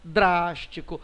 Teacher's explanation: é anti penúltima drástico outra proparoxítona